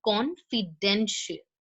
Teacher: the stress is on con and den